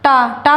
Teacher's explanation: मूर्धन्य मतलब जीवा का मुड़ कर निकलना, जैसे टा टा बोलेंगे तो हमारी जीवा ऊपर टच होके एक बार से मुड़ जाती है